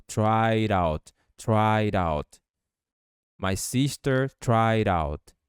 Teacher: D vai soar com o som de R quando você juntar com out, ficando tried out, tried out. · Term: Connected Speech